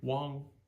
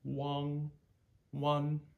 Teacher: you say the NG and you hold it for a little bit but then you stop you stop voicing completely okay Wong and you hear it tail off and same thing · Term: NG endings